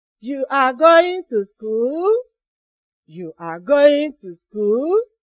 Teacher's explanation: And the answer could be yes or no. So we use the rising tone to ask yes or no questions.